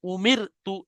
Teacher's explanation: র সাকিনের আগে জের এসছে অর্থাৎ এই রটা বারিক হবে